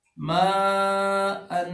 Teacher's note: ماءن کو کتنا لمبا کرنا ہے؟ 3 سے 5 الف لمبا کرنا ہے